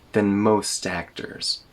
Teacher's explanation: That T in most doesn't get removed, but it gets connected to the next syllable.